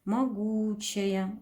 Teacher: Ударение падает на У, безударный гласный О.